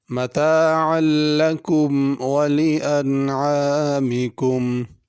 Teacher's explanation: متاعا میں اور انعام میں عین ہے، اس کو عین پڑھنا، حمزہ نہیں پڑھنا۔ انعام کے شروع میں حمزہ ہے اور درمیان میں عین ہے۔